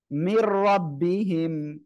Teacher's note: ঈদগামে বেলাগুন্নাটা কি, গুন্না ছাড়া মিলিয়ে পড়তে হবে।